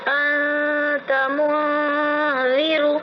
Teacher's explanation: حروف اخفاء آوے تو نون کی آواز کو ناک میں چھپا کر پڑھنا چاہیے. اخفاء کی مقدار 1 الف ہے.